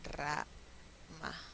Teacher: inicial de palabra van a tener la R que se escribe con una sola R, pero va a ser múltiple